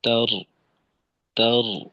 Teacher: আর শেষে রটাকে মোটা ভাবে একটু চালু রাখা, তার, তার, এরকম।